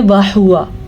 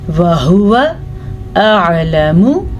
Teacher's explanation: واو کو لمبا نہیں کرنا آپ نے کیونکہ واو پہ زبر ہے. اسی طرح میم کو بھی لمبا نہیں کرنا کیونکہ میم پہ صرف اور صرف سیدھی پیش ہے.